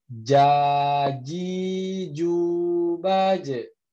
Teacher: huruf jim itu menempel tengah lidahnya bertemu dengan langit-langit.